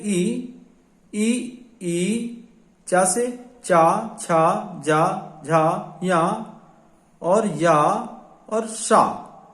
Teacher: ये इतने जो वर्ण हैं ये तालु वर्ण कहलाते हैं,